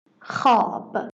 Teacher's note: we don't read the wav in the middle position of this compound